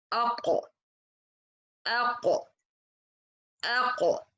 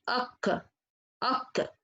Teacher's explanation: direct the pressure of the sound between the tongue and the upper palate. By this, the letter will come mufakham.